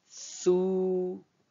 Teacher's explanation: je pince le bout de la langue et je pousse l'air avec la voyelle longue